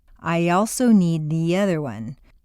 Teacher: the undercurrent of your voice run it all together go away after a long e sound your lips will be pulled back far enough to create a Y glide or liaison